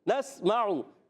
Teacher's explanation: نون کو سین سے ملائیں گے، سیٹی والا حرف سین سیٹی کے ساتھ، اور نسمعو میم پر زبر ہے، عین پر پیش ہے، حرکات کو بغیر کھینچے ادا کریں گے.